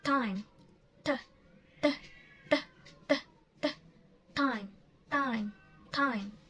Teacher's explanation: Time is a plosive sound. So the air is blocked and then you push like time. T, t, t, t, t, time, time, time.